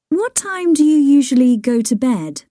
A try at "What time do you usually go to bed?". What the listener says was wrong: Il ritmo che gli hai dato all'inizio è molto italiano. Perché hai detto what time? Hai sentito la differenza? Dove metti l'accento? Tu l'hai messo in modi diversi.